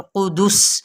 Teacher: ہے، ہا کی زیر کو لام کے ساتھ ملاتے ہوئے قدس، سین کی سیٹی کو واضح کرنا ہے